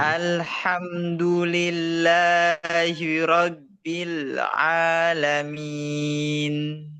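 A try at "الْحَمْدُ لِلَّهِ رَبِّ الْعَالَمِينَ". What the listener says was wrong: Ro, tebalkan lagi. Ro. Rabbil alamin. Alhamdulillah.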